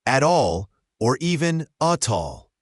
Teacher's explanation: At all often links together. The T in at is often a flap T or disappears. And the A links to all.